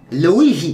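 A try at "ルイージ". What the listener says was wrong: Luigi. It's got to be Luigi. See the I being pronounced in your mind. Luigi. Yes, you've got to drag the I out. Luigi.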